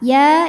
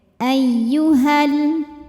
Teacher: jika wasal atau kita meneruskan bacaan h-nya ini jadi pendek